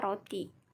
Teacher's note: bunyi getar apikodental atau apikoalveolar bersuara